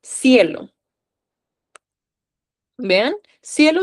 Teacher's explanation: son dos vocales en una sola sílaba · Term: diptongos